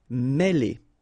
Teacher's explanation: it will give you the sound E, really open, okay?